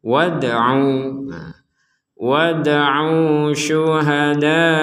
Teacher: Ini dal sukun, bacanya sama dengan ba sukun, yaitu dipantulkan. Abdina wad'u, jadi tidak sekedar wad'u kurang, harus ada pentalan.